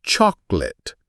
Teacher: The O is almost silent, giving it a 2-syllable punch, not 3.